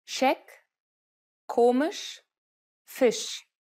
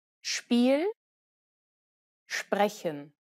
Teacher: When combined with other consonants in German, the letter S typically changes to a sh sound.